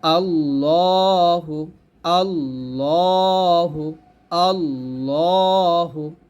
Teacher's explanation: কারণ হচ্ছে এটা আল্লাহ শব্দ লাম, এই আল্লাহ শব্দ লাম এটা জবর থাকলে এটাকে মোটা করে পড়তে হয়